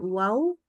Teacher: jadi e bikin huruf kawan-kawannya menjadi tebal Kenapa karena wau itu kalau kita bilang wau ya itu cenderung pangkal lidahnya naik